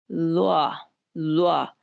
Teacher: जुबान की नोक को सामने के दो दांतों के साथ जब आप लगाएंगे तो इसकी आवाज पैदा होगी, और ये भी इंतहाई नरमी के साथ बगैर सीटी के अदा होने वाला हर्फ है, ज़्वा।